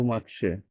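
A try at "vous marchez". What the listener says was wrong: ছ সাউন্ডটা স্পষ্ট আনতে হবে।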